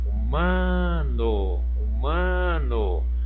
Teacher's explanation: O má aqui eu pronuncio com mais intensidade. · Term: sílaba tônica